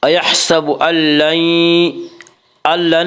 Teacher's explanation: ایحسب ان لن میں ادغام بلا غنہ ہوگا. اس کا قاعدہ ہے کہ نون ساکن اور تنوین کے بعد اگر حروف یرملون میں سے کوئی حرف آئے تو ادغام ہوگا.